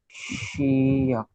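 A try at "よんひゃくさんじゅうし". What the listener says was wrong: Shiyaku. सिर्फ वो याकू नहीं है, याकू है, एच है. याकू है, एच है, एच. HYAKU.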